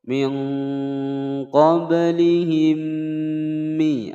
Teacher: ada mim sukun bertemu dengan mim. Hukum bacaan idgham mimi didengungkan selama dua ketukan.